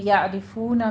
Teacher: یعرفون میں پھر عین کو وسط حلق سے ادا کیجیے